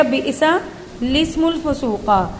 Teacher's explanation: خلاصہ یہ کہ اسموں کا جو ہے لام، اسے آگے پیچھے جو 2 حمزہ ہیں بشکل الف ہیں، ان کو بالکل نہیں پڑھا جائے گا، یعنی اسم نہیں پڑھا جائے گا، لسم پڑھا جائے گا